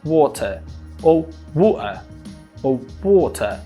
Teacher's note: Esse R final, ele é retirado. Ele vira só um schwa e as pessoas falam water ou water ou water. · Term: dropped